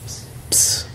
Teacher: in Greek, you do pronounce the P more, whereas in English, you would drop the P and just pronounce it like a silent P. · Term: PS sound